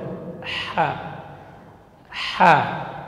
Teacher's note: Ha huruf hamas dan rakhawah keluar dari tengah tenggorokan.